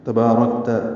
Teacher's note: ومنک السلام تبارکت آگے پڑھیں گے، تا کو جلدی پڑھنا ہے، با الف مدہ ہے، 2 حرکات لمبا ہے ، را پر ہے، کاف باریک ہے، کاف ساکن پہ ہمس